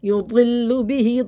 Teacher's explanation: ضل بہت موٹا منہ بھر کے پڑھیں، ضل، لو نہیں کرنا ہے، لو نہیں، لو باریک کرنا ہے.